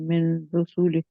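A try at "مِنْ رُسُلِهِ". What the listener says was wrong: मिर रुसुली, जे वही है जो मिर रब्बी ही, जहाँ पे मिर रुसुली ही है, इसकी भी आप प्रैक्टिस करेंगे, यानी कि नून को नहीं पढ़ना। भी आप मिन मिन रुसुली, आप मेरी आवाज में नून सुन रहे हैं?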